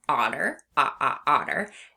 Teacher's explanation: We can hear the short O sound, the ah sound in the beginning of the word otter